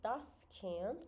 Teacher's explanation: Söz sonu d ilə bitir. Buradakı d-nı olduqca bərk yox, biraz daha yumşalmış formada d olaraq tələffüz etməliyik və ya biraz da t-ya çevirə bilərik.